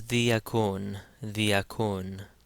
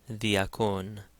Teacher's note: Again, the delta has that soft TH sound